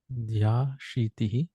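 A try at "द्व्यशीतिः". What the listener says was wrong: Dya or Dvya. Va and Ya is there. Dviya Shitihi. Dva.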